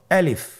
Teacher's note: আলিফ হরফটি মাখরাজ হলো আপনার মুখের শূন্যস্থান থেকে গলা এবং মুখের শূন্যস্থান হতে আলিফ হরফটি উচ্চারিত হয়।